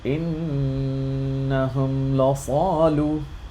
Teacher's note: This is Izhar. I am clearly showing the Meem.